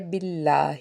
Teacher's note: اسم الجلالہ اللہ سے پیچھے زیر ہونے کی وجہ سے اس کو ہم نے نرمی سے ادا کرنا ہے